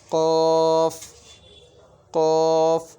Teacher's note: 4 নম্বর মাকরাজ জিহ্বার গোড়া তার বরাবর উপরে তালুর সঙ্গে লাগিয়া কফ উচ্চারণ হয়।